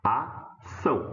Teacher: A sílaba forte é a última.